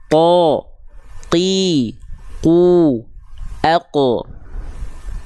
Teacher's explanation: Karena Pangka lidahnya nempelnya ke langit-langit yang lunak saja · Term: huruf q